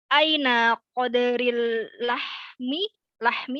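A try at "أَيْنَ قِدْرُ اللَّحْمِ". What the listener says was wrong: Ya, ini bacanya kasroh. Kidaru. Kalau pakai kof artinya takdir. Artinya takdir. Kalau pakai kasrah artinya periuk atau panci.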